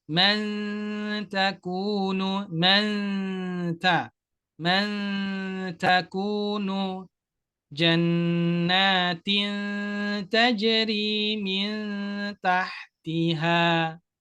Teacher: Dengung tipis ketika nun sukun atau tanwin bertemu dengan huruf ta.